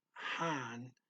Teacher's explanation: So does Han start with an H and end with a nasal sound.